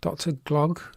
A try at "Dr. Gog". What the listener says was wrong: No, it's not Glog, because there's no L there.